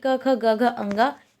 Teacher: ये पांच व्यंजन जो हैं वो कंठ से बोले जाते हैं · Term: कंठय वर्ण